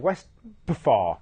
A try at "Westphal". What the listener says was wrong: Westfall. The P is not silent. Got a P in the middle.